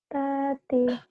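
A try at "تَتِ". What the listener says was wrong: Gak ada yang panjang.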